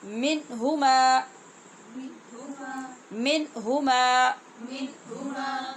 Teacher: تو میں نے آپ کو جو آج قاعدہ پڑھایا، نون ساکن اور نون تنوین کے بعد جب 6 حروف حلقی میں سے کوئی حرف آ جائے تو وہاں اظہار ہوتا ہے، بغیر غنے کے نون پڑھتے ہیں، اور اس کو کہتے ہیں اظہار حلقی